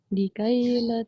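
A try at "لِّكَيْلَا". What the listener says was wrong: Tadi likaila ni kena baca panjang sikit. Tadi bacanya agak pendek. Nampak ni waw kecil ni pun tandanya tu maknanya kita dia kita kena panjangkan.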